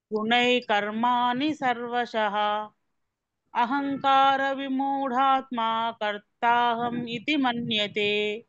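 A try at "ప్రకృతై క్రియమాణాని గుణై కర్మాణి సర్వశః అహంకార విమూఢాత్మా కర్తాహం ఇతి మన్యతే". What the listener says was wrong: హరి బోల్ మాతాజీ, very nice, thank యూ సో much మాతాజీ.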